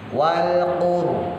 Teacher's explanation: rohnya tebel karena jatuh setelah harokat domah. Wal qur, rodok monyong ya, rodok mencucu kalau orang Jawa bilang, rada monyong.